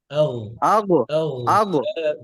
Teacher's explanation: বয়নের মাখরাজ কোথায়? আদনাল হালক, গলার শেষে